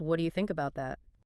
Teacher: The slight rise signals curiosity. It feels safe.